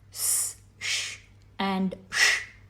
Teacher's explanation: Sa, sha and sha do not use the vocal cords and therefore they are aghosha